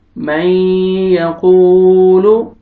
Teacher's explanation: वाव सुकून से पहले दम्मा, वाव को आपने खींचना है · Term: वाव मद